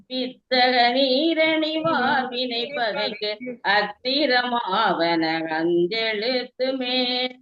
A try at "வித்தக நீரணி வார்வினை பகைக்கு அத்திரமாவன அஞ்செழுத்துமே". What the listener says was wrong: இந்த வித்தக நீரணி வார்வினை பகைக்கு கொஞ்சம் மேல போகணும். மேல போயிட்டு வந்தீங்கன்னா கீழே எல்லாம் கரெக்டா இருக்கு.